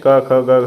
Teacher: क ख ग घ य ये आपके कंठ में होते हैं